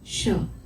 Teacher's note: જે શરણાઈનો શ છે એ આપણે જીભના મૂળના ભાગેથી જીભને ગોળ વાળીએ ને આ રીતે, આમ આમ, ત્યારે બોલાય શ.